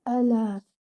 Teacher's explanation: The hamza should be given 1 count and your lam should be given 2 counts.